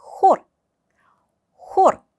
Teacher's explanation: 흐를 발음할 때 여러분 한글 히과 키 사이의 중간 발음으로 생각을 하시면 돼요. 다만 이거를 발음을 할 때 목 안쪽에서 강하게 공기를 내뱉는다라고 생각하시면 됩니다. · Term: 흐 발음